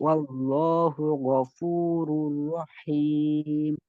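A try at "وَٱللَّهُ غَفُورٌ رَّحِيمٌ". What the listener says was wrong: হ্যাঁ, একটু হাইটা, মানে প্রেশার কম দেন, তাহলে সাদ্দা হয়ে যাচ্ছে। রহিম রহিম রহিম। হুম, মানে রয়ে প্রেশার দিয়ে না, রহিম এরকম হচ্ছে, বুঝছেন।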